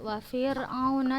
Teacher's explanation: maksudnya lidahnya kita langsung pindahkan ke cara kita nyebut ain. Jangan kita tinggalkan dia di ro.